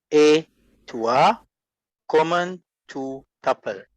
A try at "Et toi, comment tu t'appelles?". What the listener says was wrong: Yes, that's it. Very good.